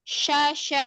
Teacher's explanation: bukan syia, tapi syasya langsung ke A, nggak mampir ke I.